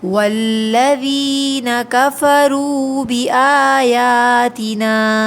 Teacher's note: یہاں پر دیکھیے، والذین میں یا ساکن سے پہلے کسرہ ہے، 2 کاؤنٹس کھینچیں گے، کفرو واو ساکن سے پہلے پیش ہے، واو مدہ ہے، 2 کاؤنٹس کھینچیں گے